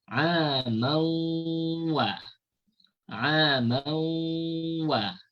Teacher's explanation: Cara bacaan idgham ma'al ghunnah macam mana? Cara bacaan idgham ma'al ghunnah iaitu bunyi tanwin dimasukkan ke dalam waw. Bunyi tanwin dimasukkan ke dalam waw. Kemudian kita dengungkan dua harakat.